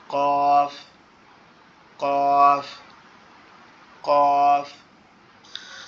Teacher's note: একটু মোটা আওয়াজে, কফ, কফ, কফ। জিহ্বার গোড়া উপরের তালুর সঙ্গে লাগায়া মোটা করে আওয়াজে কি উচ্চারণ হবে